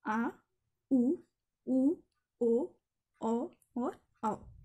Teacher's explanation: पश्च स्वर मतलब जिनमें जीभ का पिछला हिस्सा काम करता है, पीछे वाला हिस्सा।